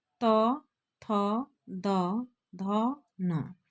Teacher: जब जीब दांत से सट के ये आवाज निकलते हैं तो इनको दं कहा जाता है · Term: दंत्य